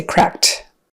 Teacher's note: sound T instead of saying cracked we say cracked um and the reason it's a t and not a D sound is because of that final k sound in in crack it's unvoiced